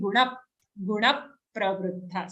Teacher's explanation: after na, we are immediately shutting our lips to give the aghat effect